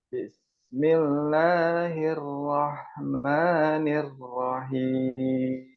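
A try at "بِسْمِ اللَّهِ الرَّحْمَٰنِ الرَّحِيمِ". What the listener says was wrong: Basmalahnya tinggal roknya ya yang kurang menebal ya, masih. Itu masih sama cucu ya, masih monyong ya bibirnya.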